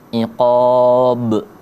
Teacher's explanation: Kalau dia kubro berada di akhir kata atau ketika kita wakaf itu dipantulin besar. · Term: kubra